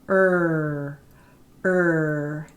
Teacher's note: in Canadian English we call that a retroflex r